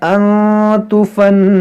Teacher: नून साकिन के बाद ता हुरूफ़ इख्फ़ा है, तो यहाँ पर भी इख्फ़ा करेंगे यानी गुन्ना करेंगे।